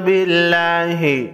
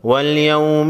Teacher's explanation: لفظ اللہ سے پہلے حرف با پر زیر ہے، لفظ اللہ کے لام کو باریک پڑھیں گے